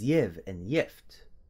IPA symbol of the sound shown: j